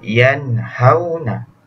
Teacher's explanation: Nun mati berjumpa dengan huruf ha, dibaca dengan yanhauna, tidak dengung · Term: izhar